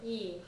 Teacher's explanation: It tends to be a little bit of a falling tone on the e for the answer.